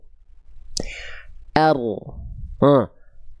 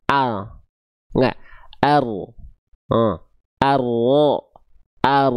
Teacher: ujung lidahnya dia gak nempel, tapi yang nempel adalah bagian punggung lidahnya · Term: huruf ro